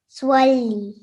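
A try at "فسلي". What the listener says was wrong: Okay, so again, you've added a hint of a W sound to that. So remove that sound, okay?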